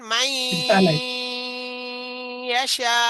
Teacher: মাই বলার সময় নাকের ভিতরে গুনগুন হয়েছে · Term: গুন্না